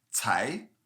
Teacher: c-a-i with the second rising tone